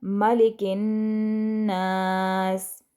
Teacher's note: काफ को नून के साथ मिला देंगे तशदीद की वजह से और गुन्ना करेंगे नून पर